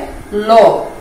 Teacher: এই ল যখন তুমি উচ্চারণ করবে তখন জিহ্বার যে অগ্রভাগ রয়েছে সেটা মাঝামাঝি দন্তমূলে ঠেকিয়ে জিহ্বার দুই পাশ দিয়ে কিছুটা বাতাস বের হয়ে আসবে, বায়ু বের হয়ে আসবে। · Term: পার্শ্বিক ধ্বনি